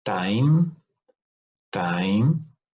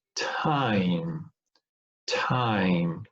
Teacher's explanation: time time which is not aspirated or time time which is aspirated